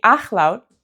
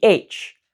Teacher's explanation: So when I'm saying when I'm producing that sound, I'm moving the back of the tongue up toward the back the soft pallet and I'm creating friction. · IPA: /x/